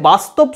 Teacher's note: যেমন হিন্দিতে বাস্তব শব্দটা যদি তোমরা শোনো ভালো করে তাহলে দেখবে বাস্তব যেন একটা ওয়াটা যখন উচ্চারণ হচ্ছে তখন দেখো উপরের দাঁত আর নিচের ঠোঁট দিয়ে আমি এই ওয়াটা উচ্চারণ করছি এবং বয়ের মতো হচ্ছে। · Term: দন্ত ওষ্ঠ ব